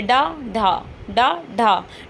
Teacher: जब बोल रहे हैं तो जीभ जो है एक झटके से आगे की ओर फेंकी जा रही है। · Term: उत्क्षिप्त